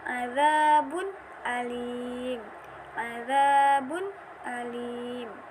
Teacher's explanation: Tanwin bertemu dengan huruf hamzah, dibaca jelas. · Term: izhar halqi